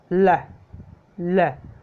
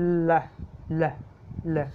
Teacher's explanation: जैसे आप एल को बोल के देखिए, ल ल, जीभ ऊपर टच हो जाती है और बिल्कुल जगह नहीं बचती आगे से, फिर जीभ के दोनों तरफ से ये वायु निकलती है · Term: लेटरल